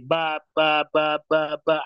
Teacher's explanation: Ada udara yang keluar. Tapi sedikit udaranya. Maka dikatakan jelas. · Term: jahar